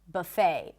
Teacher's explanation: in American English, the T is not pronounced. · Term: silent T